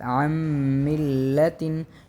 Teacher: تشدید کی صورت میں زیادہ زور اگلے والے حرف پر دیا جاتا ہے، اس جگہ میں میم مشدد ہے، زیادہ زور میم پر دیا جائے گا، جیسے کہ عن ملتن، عن ملتن، عین اور نون، ہم نے عین کو میم کے ساتھ پڑھیں گے اور نون کو ہم جو ہے مدغم کر دیں گے میم کے ساتھ، عن ملتن، چونکہ نون ساکن ہے اور اس کے بعد میم آ رہا ہے اور میم حروف ادغام میں سے ہے۔